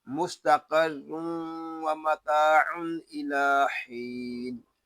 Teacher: قاف حروف مستعلیہ میں سے ہے، اس کو پر یعنی موٹا پڑھیں گے